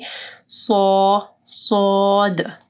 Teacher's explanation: ملانا، صاد، ٹھیک ہے، یعنی صاد جب آپ پڑھیں گے تو آپ کی زبان جو ہے وہ نیچے کے دانتوں کے پاس جو گوشت ہے وہاں پہ رکھنی ہے، اور پیچھے سے آپ کی زبان جو ہے یعنی منہ میں جیسے ہوا بھر جاتا ہے، پیچھے سے آپ کی زبان اٹھی ہوئی ہوگی